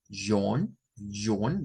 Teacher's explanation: Vean que esta O, ¿verdad? No suena a una O como del español, sino que suena a una A entre A y O.